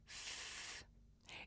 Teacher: when I make a voiceless sound like f it's just air coming through my mouth